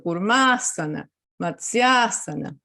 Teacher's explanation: son del mismo timbre cuando se juntan producen una vocal larga entonces ahí va a ir el acento · si hay un sandhi, el acento va a recaer en la unión de esas dos palabras, donde está la unión de las vocales. Recuerden que los sandhis vocálicos externos son cuando una palabra termina, por ejemplo, en A, y la otra empieza en A, puede ser breve o larga, son del mismo timbre. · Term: sandis vocálicos externos